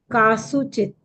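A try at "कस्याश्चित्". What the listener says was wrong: Uttamam. Very good. Uttamam. Very good.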